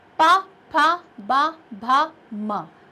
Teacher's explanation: जब आप पा वर्ग के वर्णों को बोलेंगे तो आपके जो दोनों लिप्स हैं वो टच होंगे आपस में बोलते समय। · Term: होंठ